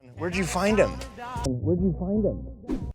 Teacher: So where did you could sound like where did you, but it sounded like where'd you find him? And there is this drop of the H that we've already covered.